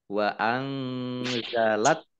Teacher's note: nun sukun bertemu dengan huruf za, bacaan ikhfa dibaca samar-samar